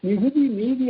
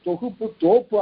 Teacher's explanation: அது தமிழ் மொழியில 2 குரில் முதல்ல ஒரு சொல்லுல சேர்ந்து வந்தா சமயத்துல நெடில் ஆயிடும்